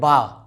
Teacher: तो आधा इस होंठ और आधा ये होंठ, दोनों होंठ को मिलाएंगे तो हम बा की अदायगी कर पाएंगे